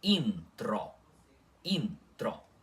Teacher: Intro com o N puxado antes do T